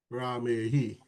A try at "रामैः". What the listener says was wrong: Ramehi. Not Ahi. Like AI. Ramehi. Okay, that pronunciation needs a little practice, but good.